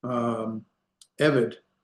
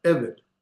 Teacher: the first letter, the ayin with the sagol, is accented, and that's where we put our emphasis, evid. And so it's and then vid, evid.